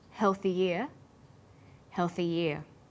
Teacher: For example, healthy year sounds the same as healthy year. When healthy is linked together with ear, a y sound is added.